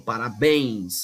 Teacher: palavras oxítonas que tem a última sílaba mais forte certo por exemplo Parabéns é uma palavra oxid não tem a · Parabéns é a palavra oxítona, tem a última sílaba mais forte.